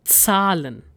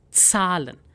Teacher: you need to make sure that there is slight t sound ts sound in it